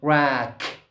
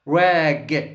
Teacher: Say rack, no vibration. Rag, g, vibration.